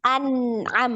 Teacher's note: An-na'am masih ada tawalud di nun.